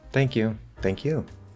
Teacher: person responds with the same words think is still stressed but we're actually giving the focus to you and that's going to stand out a lot more